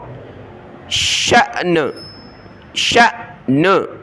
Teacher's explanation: حمزہ ساکنہ کو پڑھتے وقت جھٹکا دینا ہوتا ہے